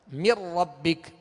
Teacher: اب نون ساکن کے بعد چونکہ را آ گیا، اب نون کو را میں ملانا ہے. مر ربک، اب اس کو من ربک غنہ نہیں کریں گے.